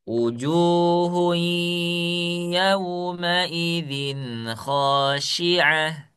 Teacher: yang tanwin bertemu dengan huruf ya harus ada ghunahnya